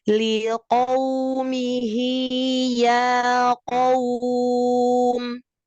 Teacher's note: Qaf itu pangkal lidah atas ketemu dengan langit yang lembek.